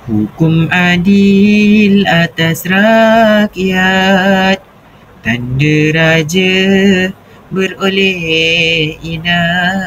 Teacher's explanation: Setiap pasangan baris iaitu dua baris rangkap membentuk pola intonasi menurun di hujung baris kedua menunjukkan penegasan atau penutup idea nasihat.